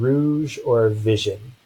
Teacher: this is the voiced post alveolar fricative